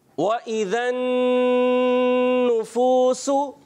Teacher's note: होंठों की गोलाई से ही वाव अदा होता है